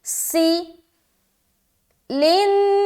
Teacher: وَيُبَيِّنُ آیاتہ، آگے لِلنَّاسِ، لن میں نون مشدد کا غنہ اور پھر الف مدہ، سی میں سیٹی ظاہر ہوگی